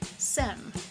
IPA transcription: sɛm